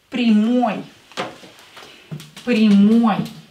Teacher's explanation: with ой ending because the last syllable is stressed